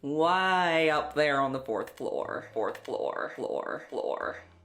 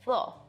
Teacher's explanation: African Americans in Appalachia may be more likely to be rhotic, so in words like floor, Way up there on the fourth floor.